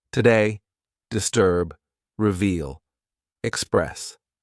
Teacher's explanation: where the stress falls on the second syllable today disturb Express reveal we'll say the first syllable and clap · Now a couple of words where the stress falls on the second syllable.